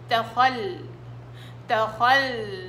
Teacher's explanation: في صوت لللام. ليش؟ لأنه توسط، والتوسط له صوت، له جريان بيني. تخل تخلت تخلت، ملاحظين اني ما شديتش على مخرج اللام.